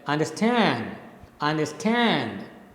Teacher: the last syllable is stressed the first two are unstressed so you speak it like understand understand right the last stand · So when you speak this word in English, the last syllable is stressed, the first two are unstressed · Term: anapest